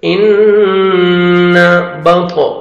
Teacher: ان نون مشدد ہے، غنہ کریں گے، نوز میں ساؤنڈ لے کے جائیں گے، ان بط، طا ساکن ہے اور طا حروف قلقلہ میں سے ہے جو 5 لیٹرز ہیں، قاف طا با جیم دال، جن کا مجموعہ ہے قطب و جد، یہ 5 لیٹرز ہیں۔